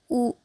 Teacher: छोटा ऊ और बड़ा ऊ का उच्चारण स्थान ओठ है, क्योंकि यह ध्वनि ओठ से निकलता है